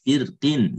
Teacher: Firqin itu kan qafnya itu kasroh mempengaruhi huruf sebelumnya ro menjadi tarkik